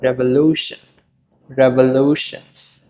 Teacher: there are four syllables, and the stress is on the third one